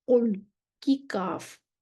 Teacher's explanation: जिन हरूफ़ में ये सिफ़त पाई जाती है, उनको मुस्तआलिया कहते हैं। इन हरूफ़ को अदा करते वक़्त ज़ुबान की जड़ ऊपर के तालु की तरफ उठती है, जिसकी वजह से ये हरूफ़ मोटे पढ़े जाते हैं। मसलन कुल की काफ, जो काफ है ना, जब ये हम अदा करते हैं तो जुबान की जो जड़ है वो ऊपर के तालु की तरफ उठती है। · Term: अल-इस्तिला